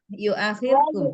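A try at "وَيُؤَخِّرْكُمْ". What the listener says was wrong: Akhirkum. Akhirkum. Ada wawnya Jangan ada tekanan di bibir.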